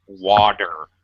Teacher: But this is the reduction aspect in English, where if a T is surrounded on either side before and after with a vowel sound, Americans pronounce it as a D. So water, proper pronunciation for many Americans becomes water, more of a D sound. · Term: flapped D